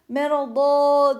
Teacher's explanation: varsayıyorum burada tenvini açıp tenvin Açılıyor ya duruş gerçekleştirdiğim tenvin açılıyor Mer diye bir Elif uzatıp bırakıyoruz İşte biz buna meddi IV diyoruz